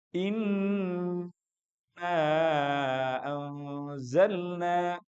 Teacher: Nun tasdid dan mim tasdid itu adalah suara hidung tanpa melibatkan mulut dan lidah kita. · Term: ghunah